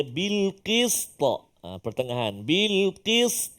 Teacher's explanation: Hati-hati pada berhenti pada bil qist, qalqalah dekat ujung tu supaya dia bunyi. Tambah-tambah pula huruf ta, huruf yang banyak sifat dia, jadi kena jelaskan kat situ.